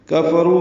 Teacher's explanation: کفروا میں کاف وا جلدی پڑھیں گے، رو واو مدہ ہے 2 حرکات لمبا کریں گے